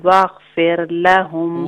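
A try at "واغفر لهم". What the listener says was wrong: واغفر لہم را لائٹ ہے، فیر نہیں، واغفر لہم۔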